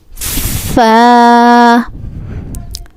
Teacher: We stretch this letter for 2 seconds, and this letter originate when inner portion of the lip of the lower lip meets the edge of the upper central incisors